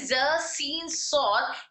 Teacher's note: तीनों में पाई जा रही सिफत सफीर ज सी सौत सफीर का मतलब है सीटी की आवाज सफीर का मतलब क्या है सीटी की आवाज यानी ज सीन सौत इन तीनों को अदा करते वक्त में सिफत सफीर अप्लाई होता है यानी इनको जब इनके मखरज से अदा करते हैं तो इनके अंदर एक सीटी सी आवाज आती है